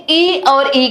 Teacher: ई का जब हम उच्चारण करते हैं तो हमारी जिह्वा जो है वो तालु को स्पर्श करती है, जिससे हमारे मुख से ई और ई का उच्चारण होता है।